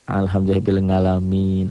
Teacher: di Jawa ainnya jadi nga